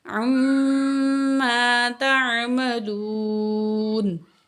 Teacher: عین زبر میم، عم، میم تشدید ہے، غنہ کریں گے، عما، الف سے پہلے زبر ہے، 2 کاؤنٹ کھینچیں گے، الف مد ہے